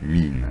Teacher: on a le verbe mean, qui s'écrit aussi EA, mais là, pour le coup, il se prononce I. Mean, avec un I long.